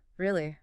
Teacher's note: But really with a low falling pitch.